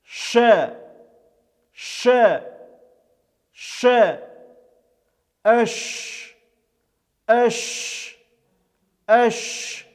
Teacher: когда мы среднюю часть языка при женева прижимаем к среднему небу оставляем небольшую щель это звук является щелевым глухим произносится без участия звука также это звук является мягким и он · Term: буква шин, буква Шин